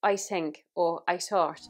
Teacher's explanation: tongue goes between our teeth in the southern Irish accent these can be not always but they can be changed to a t or a d